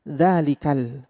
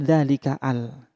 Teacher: hamzah washal itu tidak terbaca ketika berada di tengah-tengah · Nah, itu yang sudah kita bahas pada saat kita membahas surah Al-Fatihah, yaitu yang dinamakan dengan hamzah wasal. Hamzah wasal itu tidak terbaca ketika berada di tengah-tengah.